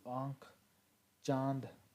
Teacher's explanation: इसका उच्चारण नाक और मुंह दोनों से होता है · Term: अनुनासिक